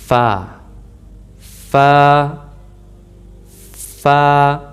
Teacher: फ़ा की अदायगी नीचे वाले होंठ के अंदरूनी साइड पे जब हम दांत रखेंगे फिर अदा होगा फ़ा